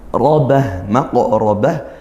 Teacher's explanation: qof sukun kita pantulkan maka ini Qalqalah sugro dibaca mantul robah maqraobah ro berharakat fathah kita baca tafkhim tebalkan kalau tebal